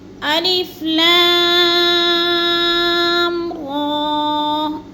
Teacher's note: اس لیے کہ اس کے اوپر شد نہیں ہے، ہم نے غنہ نہیں کرنا، اس کو جلدی جلدی ادا کرنا ہے۔ الف لام را کے اوپر کھڑی زبر ہے، تو را کو ہم نے کم لمبا کرنا ہے اور لا کو لمبا کرنا ہے، اس لیے زیادہ کہ ادھر مد ہے۔